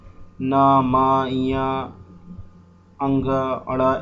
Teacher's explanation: वो व्यंजन जो नोज के थ्रू बोले जाते हैं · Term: नासकीय व्यंजन